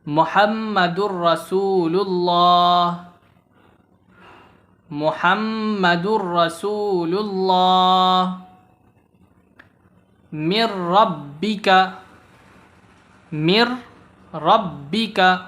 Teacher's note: تنوین یا نون ساکن کے بعد حروف یرملون میں سے یعنی ان الفاظ میں سے کوئی حرف آ جائے تو لام اور را کی صورت میں بغیر غنہ کے ملا کر پڑھیں گے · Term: ادغام بلا غنہ